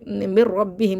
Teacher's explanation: نون کو را سے ملا تو رہے ہیں لیکن غنہ نہیں کریں گے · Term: ادغام بلا غنہ